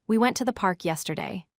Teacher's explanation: Stress went, park, and yesterday strongly. The words to and the remain weak. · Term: sentence stress